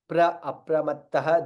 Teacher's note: Apramattah, there is double the tha there